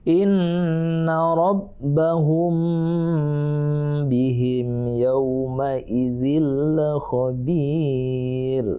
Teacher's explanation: ikhfa syafawi berarti waktu kita baca hum bihim sama-sama dengung di bibir ya